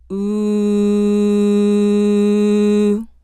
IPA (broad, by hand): u